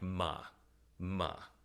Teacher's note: tone is a low falling tone that is denoted by a water slide going down. For this one, you have to pretend like you're depressed and make it go down like ma.